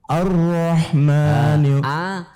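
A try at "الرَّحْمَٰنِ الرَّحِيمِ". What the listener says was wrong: Di situ masih tipis. Kemudian ketika masuk ro menjadi tebal. Ar-Rah bukan ar-Rah tapi Ar-Rahmanirrahim. Kembali ni-nya tipis juga, ro-nya tebal.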